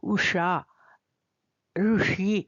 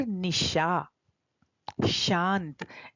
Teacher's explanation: मूर्धन्य श श है श नहीं है तो उसका उच्चारण हमें जहां से हम टठडढण बोलते हैं वहां मोड़ के जब हम जीव को लगाएंगे तो इस श का उच्चारण होगा